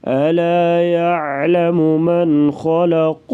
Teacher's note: الا عین گلے سے آواز نکالیں گے · من پہ اظہار ہوگا، غنہ نہیں کریں گے